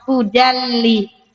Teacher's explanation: Hudan ada n tapi masuk ke lam. Hudalli idgham kamil.